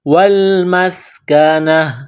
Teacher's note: کو لام کے ساتھ ملانا ہے، میم کو سین کے ساتھ، سین میں سیٹی کی آواز پیدا کرنی ہے